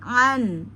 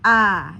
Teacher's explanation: tengah tenggorokan pada ain. Pastikan an ya jangan a ya karena dia ada di tengah tenggorokanna an ya.